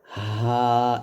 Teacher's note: পার্থক্য হচ্ছে যখন আপনি এই অক্ষরটা উচ্চারণ করবেন আপনার গলার মাঝ থেকে গলার মাঝখান থেকে বলতে হবে চাপ দিয়ে হা আর এই হরফটা যখন উচ্চারণ করবেন তখন গলার শুরু থেকে বলতে হবে এখানে কোন রকম চাপ হবে না · গলার শুরু থেকে বলতে হবে, এখানে কোনো রকম চাপ হবে না, বলতে হবে হা, এরকম।